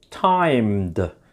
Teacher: Ed sounds like d because m is a voiced consonant sound.